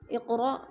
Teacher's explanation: اقرأ کو جھٹکا دے کے پڑھیں گے، کیونکہ حمزہ کے اوپر جزم ہے